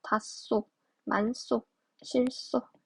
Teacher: 히읗 뒤에 시옷이 올 때는 쌍시옷으로 발음을 한다